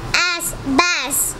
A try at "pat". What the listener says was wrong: No, it's not bass. P at pat.